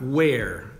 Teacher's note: So the vowel sound is air, and then you put the W sound in the front